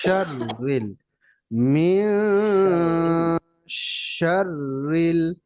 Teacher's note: শিন উচ্চারণ হবে, মুখের ভিতর আওয়াজটা ছড়ায়া যাবে।